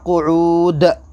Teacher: آخر میں ہم دو پیش پر وقف کر رہے ہیں تو یہاں پر قلقلہ ہوگا ، دال حروف قلقلہ کے 5 حروف میں دال ہے، اور